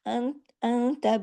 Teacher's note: इसमें छोटा-सा एक गुन्ना है कामिला, नून साकिन के बाद ता है, इस वजह से गुन्ना कामिला है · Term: इख्फ़ा हकीकी